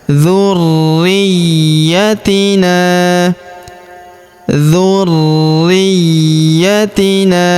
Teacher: Dzurriyatina huruf na kita panjangkan empat atau lima harakat karena di depan huruf na terdapat alif yang di atasnya terdapat tanda garis bacaan panjang empat atau lima harakat.